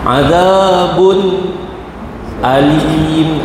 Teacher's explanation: tanwin bertemu dengan hamzah izhar halqi